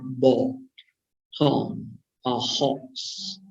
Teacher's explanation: It is strong lip rounding. · For the O sound, the tongue high for this vowel is between the primary cardinal vowel number 6 and primary cardinal vowel number 7